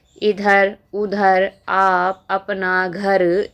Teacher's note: ये ऐसे जो शब्द हैं ये निरनुनासिक होते हैं जो सिर्फ मुंह से बोले जाते हैं